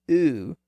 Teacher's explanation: When we pronounce the highest back vowel sound, oo, there's a slight raising of the back part of the tongue toward that position.